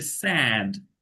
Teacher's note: স্যাড মানে চোয়াল একদম খুলে যাবে একেবারে